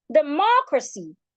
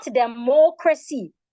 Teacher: democracy has three syllables but of course we're stressing the second syllable